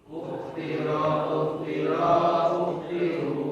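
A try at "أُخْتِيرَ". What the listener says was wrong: T-nya panjang ya, ukhtira, ukhtira ya.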